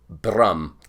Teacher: almost like a rolled R that Scottish type accent